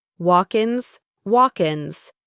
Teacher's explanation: that K sound at the end of walk links to the next word ins. It sounds like walkkins.